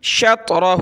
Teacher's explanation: طا پہ قلقلہ بھی کریں گے موٹا کریں گے